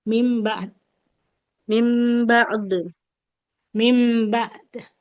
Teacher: Kalau mau berhenti di sini, dalnya nggak boleh dibaca mim ba'du.